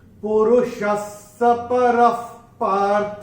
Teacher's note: विसर्ग के बाद जब प या फ आता है तो विसर्ग का उच्चारण होता है फ। जैसे हम फूंक मारते हैं ना, वो ऐसा वाला फ होता है।